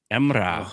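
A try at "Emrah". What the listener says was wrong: And then the H is pronounced as well. So there's a H at the end.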